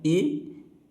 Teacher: ए जो है इसका उच्चारण कंठ तालव्य है। ये आ और इ से मिलकर बना हुआ।